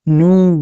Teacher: ساکن سے پہلے پیش ایا ہو اس لیے وا مد ہوگا وا مد کو ایک الف کے برابر کھینچ کر پڑھے